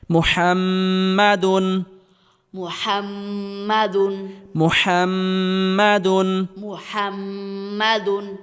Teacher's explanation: মিমের উপর তাজদিদ থাকার কারণে আমরা গুন্নাহ করে পড়তেছি